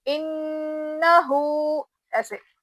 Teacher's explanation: نون پہ غنہ کریں گے، کیونکہ جب بھی نون پہ تشدید آتا اس کو ہم غنہ کر کے پڑھتے